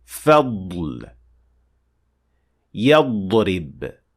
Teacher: Well, if you pronounce the Dad properly within a word, you'll notice that when leaving the Dad with sukun and moving to the letter after, you will feel some kind of air released from the sides of your tongue, slightly pushing this air to the inners of your cheeks.